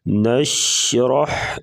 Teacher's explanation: ہا کی آواز گلے سے نکالیں گے۔ نشرح شین زبان کا درمیان اوپر تالو کے ساتھ لگائیں گے۔